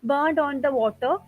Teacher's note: Water uses O sound, which is a back vowel.